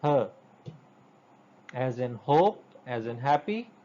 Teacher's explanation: Even it's not a real consonant, because it is produced, if you remember in the previous lecture, her sound is produced at the lower end of our vocal tract, at the place of glottis or the vocal folds, and it simply passes the air through our oral cavity without any sort of special friction. So this is even some sort of semi-vowel type sound.